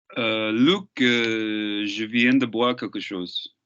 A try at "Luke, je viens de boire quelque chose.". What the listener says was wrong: Slightly smaller mouth with you as well. Okay, because there's a bit of a twang in your voice, which is lovely, which is that kind of like nyat nyat thing, which is great. Give me more of that. There's something when people are from certain places that they think that's something they need to get rid of.